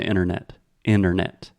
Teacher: we do not say the first T